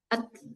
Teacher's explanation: At at ringan. Habis ketahan dia ee mengalir dan tidak qalqalah. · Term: huruf ta